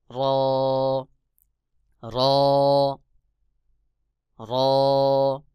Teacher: এরপরে রয়েছে র। জিহ্বার আগার পিঠ তার বরাবর উপরে তালুর সঙ্গে লাগাইয়া র উচ্চারণ হবে